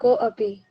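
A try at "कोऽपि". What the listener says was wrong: कोपी, जब उसको पढ़ेंगे तो ऐसी अ का उच्चारण नहीं करेंगे, ठीक है। वो सिर्फ दिखाने के लिए खंडाकार लग रहा है, पर उसका उच्चारण हम नहीं करेंगे। क्या हो गया, को प्लस अपी, कोपी।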